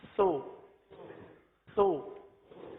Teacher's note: اور پیش میں ہونٹ گول ہو رہا ہے